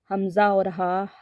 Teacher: हमजा और हा हलक के नीचे वाले हिस्से से अदा होते हैं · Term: हरूफ हल्क